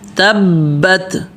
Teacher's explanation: تبت تا کے ساتھ با کو پکڑنا ہے اس لیے کہ با کے اوپر تشدید ہے